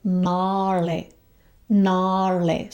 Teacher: So we have the long A and the retroflex RLA.